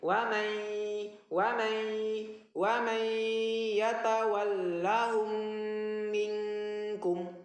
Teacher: Jadi wa may, ketika dirasakan di sini huruf nun itu tanda gunnah itu adalah terasa getaran di hidung. Jadi bacanya wa may, jadi tetap harus ada getaran di hidung.